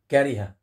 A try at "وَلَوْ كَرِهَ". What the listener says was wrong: ما في ضم على الهاء ابني ولو كره مين